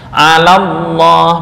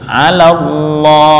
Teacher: Eah karena bertemu dengan lam bertasydid hasilnya adalah pengucapan lafal lam dari ala yang berharakat fathah langsung masuk ke lam tasdid dari lafal Allah